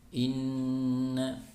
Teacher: Contohnya inna, jadi tahan, tidak langsung inna, tapi ditahan dulu, tidak tergesa, ditahan 3 harokat, kemudian suaranya bersumber dari rongga hidung, sehingga ketika membaca gunnah dalam kondisi hidung ditutup atau tersumbat, ya, maka suara gunnah itu tidak keluar, ya, karena suara gunnah dari rongga hidung.